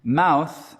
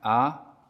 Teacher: mouth in my own accent starts down here something like ah and moves up here and runs the lips a little bit something like oh and you might be able to feel that in your own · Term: mouth vowel